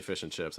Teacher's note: I would put the stress on chips myself.